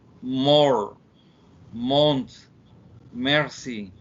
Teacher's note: nasal bilabial voice. It's a vibration in our throats. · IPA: /m/